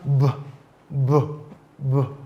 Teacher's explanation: certain movement within the vocal tract for The Voice consonant it it is produced with vibration of the vocal cord · These are consonant sounds that are produced based on certain movement within the vocal tract. For the voiced consonant, it is produced with vibration of the vocal cord. Many times, when you want to pronounce the voice sound, you need to put your hands to your vocal cords and pronounce the sound.